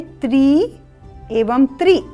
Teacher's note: एक त्र पर दीर्घ स्वर है ई का और दूसरे त्र पर ह्रस्व स्वर है इ का